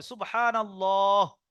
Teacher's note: আল্লাহর আগে নুনের উপরে জাবার আছে, তাহলে আল্লাহর লামটাও পুরো হবে